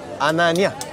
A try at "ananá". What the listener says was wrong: Ananá, dile la A. Ananá.